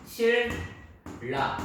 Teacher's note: 신라는 니은 플러스 리을. 그래서 최종 소리가 리을 플러스 리을이 되니까 소리는 실라 이렇게 나겠죠. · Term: 유음화